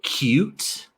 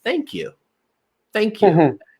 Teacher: Now, this one's a little interesting because it's not technically just a vowel sound. You're actually mixing the consonant Y sound Y with u you. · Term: long u sound